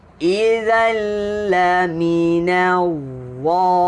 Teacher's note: Huruf dha keluarkan lidah tuan-tuan. Huruf dha keluarkan lidah, muncung sikit. · Hujung lidah keluarkan. Tapi kita kena angkat lidahnya sebab dia isti'la, dia huruf tebal. Laminal dha.